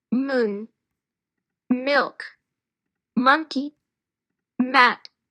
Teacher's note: நம்ம சவுண்டே வெளியே வராது. வாய் ரெண்டு உதடுக்குள்ளே மூடிட்டு ம்னு சவுண்ட் உள்ளவே தான் வரும்